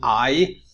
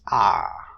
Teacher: so what we do in monotonization we replace this part so instead of saying I you drop the offglide replace it with some length by adding length to the head and compensate for the deletion so I becomes ah some people call this um this smoothing